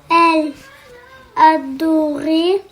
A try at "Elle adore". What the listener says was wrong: Adore. Il n'y a pas d'accent sur le E, donc elle adore.